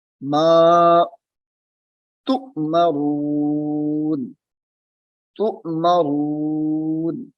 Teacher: اب یہاں پہ بھی تا کو حمزہ کے ساتھ ملانا ہے تو حمزہ ساکنہ ہے، جھٹکا دے کے پڑھیں گے.